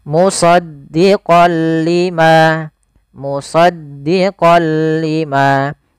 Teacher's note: Idgham artinya memasukkan. Memasukkan apa? Suara nunnya kepada huruf lam, tapi tidak boleh disertai dengan gunnah. Maka dinamakan dengan idgham bila gunnah, hanya masuk saja. · Awalnya kalau kita baca musaddiqan, karena bertemu dengan huruf lam, tanwinnya masuk ke huruf lam. Suara n-nya dihilangkan menjadi diganti menjadi huruf lam.